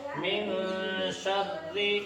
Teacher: من شر میں اخفا ہوگا، اس لیے ایک الف کے برابر ناک میں آواز چھپا کر پڑھیں گے